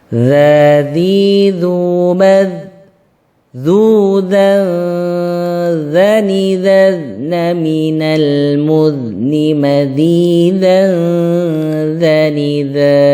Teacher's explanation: Jadi kalau dha tebal, kalau dzal tipis, ya. Cara menebalkan dengan tidak tersenyum, kalau menipiskan dengan tersenyum. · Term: huruf dzal